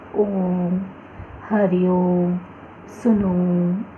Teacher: तीसरा है प्लुत स्वर। प्लुत स्वर के उच्चारण में ह्रस्व स्वर से 3 गुना या उससे भी अधिक समय लगता है।